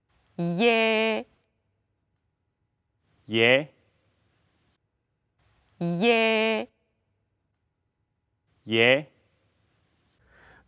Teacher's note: To be more, it's ye, but the after glide, you pronounce the open ye, but it's a slightly more open than American e.